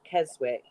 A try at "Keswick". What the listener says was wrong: the W is silent.